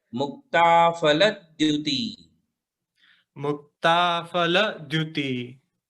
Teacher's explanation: द्युति के पहले ल पे जोर दिया जाएगा